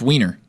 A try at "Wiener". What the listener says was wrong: No, it's Wiener because W is pronounced with a V.